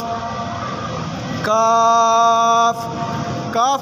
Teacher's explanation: काफ को जबान की जड़ और तालू के सख्त हिस्से से अदा करेंगे